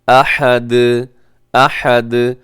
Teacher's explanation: دال ساکن ہوگی، اور ساکن ہوگی تو دال قلقلہ ہوگی